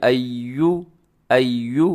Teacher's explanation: ہونٹ آپ کے گول ہو جائیں پیش پر